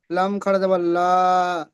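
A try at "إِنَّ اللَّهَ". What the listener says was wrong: লা নয়, লাম খাড়া যাবার ল। আলিফ নয়, হারাকাত।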